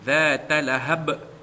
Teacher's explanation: dia qalqalah kubra, lantunannya kuat, ya, kerana di ujung bacaan yang diwakafkan